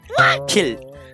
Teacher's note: take the PH from his name as an aspirated P.